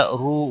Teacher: سرو را کے اوپر پیش ہے، پر پڑا جائے گا. رو واو مدہ ہے، ایک الف کے برابر کھینچ کر پڑھیں گے